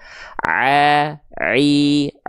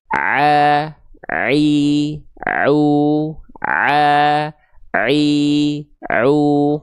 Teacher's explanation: ain dilafalkan tepat dari bagian tengah tenggorokan kita. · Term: huruf ain